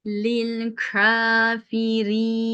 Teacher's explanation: A sesiyle durdum. Çünkü ra üstünlüyken kalın okunur. İki üstün olsa da kalın okunuyor.